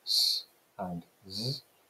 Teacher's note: as you move further back through the mouth, you've got alveolar fricatives, s and z. You've got palatal fricatives, which are sh and j.